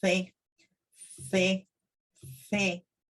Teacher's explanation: In Latin America, C and S are the same sound for us. However, in Spain, they pronounce like TH in English.